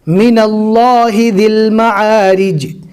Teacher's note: اللہ کے لام کو پور پڑھیں گے، یعنی موٹا پڑھیں گے، منہ بھر کر پڑھیں گے